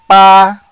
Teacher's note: B in pinyin is pronounced as English unaspirated unvoiced labial P.